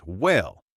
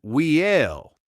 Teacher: we tend to stretch out our vowel sounds. A one-syllable word might sound like it has two or even three syllables. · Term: the drawl